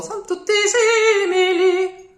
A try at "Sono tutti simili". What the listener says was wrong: No S. Sono tutti. Exactly.